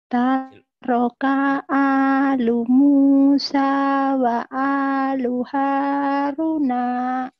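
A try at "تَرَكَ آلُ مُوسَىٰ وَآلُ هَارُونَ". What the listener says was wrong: Harunya panjang. Haruna gitu Bu.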